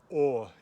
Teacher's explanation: It is ah with rounded lips, like a northern New Jersey pronunciation of coffee. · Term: o caudata